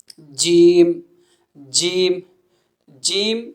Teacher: جیم جیم کہا جائے تو زبان کا درمیانی جو حصہ ہے وہ اوپر کے تالو سے لگ رہا ہے